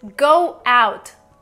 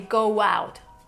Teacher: You would actually say go out, together as one word.